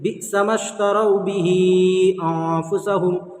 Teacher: बिसमश्तरौ बिही अंफुसहुम, तरौ बिही जो है यहाँ पर वाव साकिन से पहले ज़बर, इसलिए वावलीन हो गया। वावलीन को नर्म आवाज़ के साथ जल्द अदा करेंगे, यहाँ पर गुन्ना नहीं करेंगे, ठीक है। यहाँ पर बिही में आपको मद करना, हुरूफ मद्दा के बाद जो है हमज़ा दूसरे कलीमे में, इसलिए मद्दे मुनफसिल होगा। · मद्दे मुनफसिल को कम से कम 3 अलिफ आपको खींच कर पढ़ना है